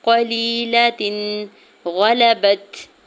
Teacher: تنوین پر اظہار حلقی ہوگا کیونکہ آگے جو غین ہے وہ حرف حلقی میں سے ہے، تو یہاں پہ ظاہر کر کے پڑھیں گے تنوین کو، ٹھیک ہے۔